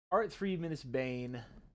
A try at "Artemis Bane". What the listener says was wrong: Did you pronounce the 3? It's Artemis Bane.